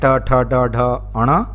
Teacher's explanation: ट वर्ग में मूर्धा से बोले जाने वाले व्यंजन होते हैं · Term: मूर्धन्य व्यंजन